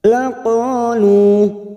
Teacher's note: Karena kita wakaf di sini, maka kita panjangkan dua harokat.